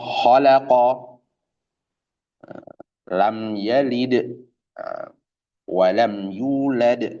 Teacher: karakter huruf lam itu kan istifal infitah tipis Tipis karakternya tipis. Makanya bacanya ya tipis. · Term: lam hijaiah asli